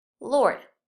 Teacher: this consonant R, gives the vowel a special sound that's neither long nor short. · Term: R-controlled vowels